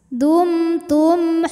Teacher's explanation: izhar syafawi karena mim sukun menghadapi huruf ha maka mim sukun dibaca jelas